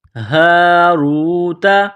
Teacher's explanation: یہ گول ہا ہے چشمے والی، صرف منہ سے ہوا نکالنے کی طرح اس کو پڑھیں گے ، ہا الف زبر ہا، را واو پیش رو، را کو